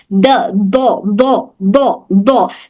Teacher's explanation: तो हम ये जो दौ की आवाज निकाल रहे हैं, ये बिल्कुल जौ जौ जो हम बोल रहे हैं, जौ जब बोलेंगे तो इस तरह से जौ हो जाता हो। तो ना ये जौ हो रहा है ना ये दाल हो रहा है, बल्कि इन दोनों के दरमियान दाल जबान के किनारे से अदा होता है